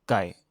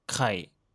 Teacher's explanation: c'est presque le même mot que poulet, seul le K change et devient aspiré.